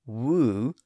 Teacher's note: In fact, if you say woo, you'll notice that there's very little change in the mouth between the initial W sound and the vowel sound that follows it. In that context, the lips are a little bit tighter or more constricted when making the initial W sound, but that's the only real difference.